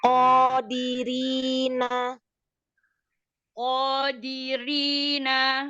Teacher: Nunnya dijelaskan lagi, jaharkan. Jangan jadi nggak kedengeran.